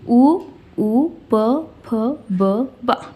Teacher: ಏನಂತ ಕರೀತೀವಿ ಓಷ್ಟ್ಯ ಯಾವವು ಅಂತ ಹೇಳಿದ್ರೆ ಉ ಪ ಬ ನೋಡಿ ಇಲ್ಲಿ ಎರಡು ತುಟಿಗಳಿಂದ ಮಾತ್ರ ಈ ಅಕ್ಷರಗಳನ್ನ ನಾವು ಉಚ್ಚಾರಣೆ ಮಾಡ್ತೀವಿ ಬೇರೆ ದವಡೆಯಿಂದ ಕಂಠದಿಂದ ಹಲ್ಲಿನಿಂದ ಯಾವುದೇ ಎತ್ತರನಾಗಿ ನಾವು ಉಚ್ಚಾರಣೆ ಮಾಡಲಿಕ್ಕೆ ಆಗಲ್ಲ ತುಟಿಗಳ